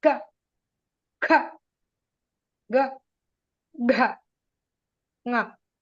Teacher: The ka and nga, they originate from the same place, kanta.